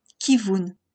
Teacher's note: un vav en tant que consonne V, suivi de la voyelle shuruk pour le son OU. Les deux lettres se prononcent naturellement vous, kivun.